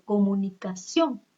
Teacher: Digo comunicación. Sion va a ser la sílaba tónica porque es la mayor fuerza de voz.